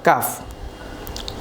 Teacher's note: জিহ্বার গুড়ার কিছুটা সামনের অংশ তালুর সাথে লাগিয়ে উচ্চারিত হয় কাফ।